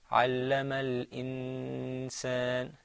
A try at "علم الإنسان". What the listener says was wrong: Okay, don't let your tongue touch the top of your mouth. علم الإنسان Now this hukm here is ikhfa. The noon is hiding a little bit.